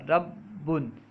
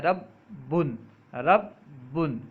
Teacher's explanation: جیسے ربن میں با کو پہلے ساکن پڑھا جاتا ہے پھر اس کو متحرک ادا کیا جاتا ہے، اسی طرح پڑھنے کو تشدید کہتے ہیں